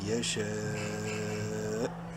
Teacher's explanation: وقفاً حمزہ کی پیش اڑ جائے گی